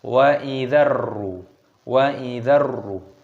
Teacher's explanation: Ciri-cirinya ini roknya berharokat tasdid, maka dzalnya yang ada di sini ini tidak lagi dibaca panjang, tapi dibaca pendek. Kita langsung idghamkan, kita langsung tekan, kita langsung masukkan ke dalam huruf ro.